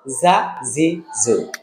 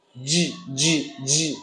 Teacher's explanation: যাটা হলো জিহ্বার আগা দিয়ে এরকম একটা সাউন্ড দেওয়া হবে, আর জিমটা হলো জিহ্বার মধ্যখান দিয়ে